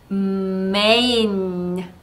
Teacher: N도 유지되는 성향이기 때문에 메인 하고 끝나는게 아니라 메인 하고 소리를 유지시켜 주시는 것이 중요합니다